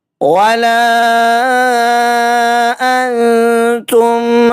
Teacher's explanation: دوبارہ سے مد منفصل ہے، 2.5 سے 3 الف کے برابر کھینچ کر ادا کریں گے۔ انتم، نون ساکن، نون ساکن کے بعد آگے تا ہے، اخفا کا قاعدہ اپلائی ہوگا، 1 الف کے برابر غنہ کرنا ہے۔